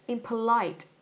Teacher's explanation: Ok, nó sẽ rơi vào âm tiết thứ 3, âm tiết cuối nhá. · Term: Trọng âm